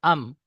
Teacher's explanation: দুই ঠোঁটের শুকনো অংশ মিলিত হয়ে উচ্চারিত হয় মিম